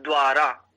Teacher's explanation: द्वारा में हमें प्रायः बहुत कम पकड़ में आता है कि इसमें ऊ उकार कहीं भी नहीं है, वाह है वाह।